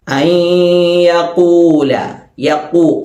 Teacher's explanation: അയ്യഖൂല, യഖൂ, ഖാഫ് ശ്രദ്ധിക്കണം. ഖാഫിന്റെ മഖ്റജ് നാവിന്റെ അങ്ങേയറ്റം മേലെ അണ്ണാക്കിൽ തൊടുക.